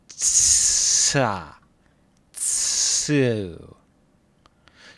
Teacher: Tsu is a special case. For tsu, we really make a t sound and release it slowly, making a s sound with it. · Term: ts sound